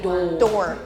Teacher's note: I don't hear an R at all.